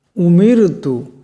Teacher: রা সাকিন তার ডাইনে জের আসছে গতিকে রাকে পাতলা আওয়াজে পড়তে হবে